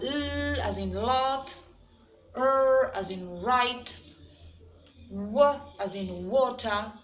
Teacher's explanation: there is an approximation between organs, yes, and the air passes freely. There's no friction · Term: approximants